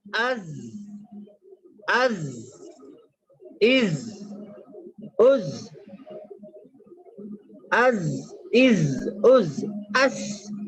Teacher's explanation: زبان کی نوک اور سامنے کے جو اوپر نیچے والے 4 دانتوں کے کنارے ہیں وہاں سے یہ ادا ہوتا ہے